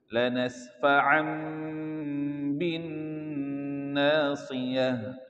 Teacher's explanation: Bin ya masuk ke hidungnya, bukan bin biasa tapi suara masuk ke hidung.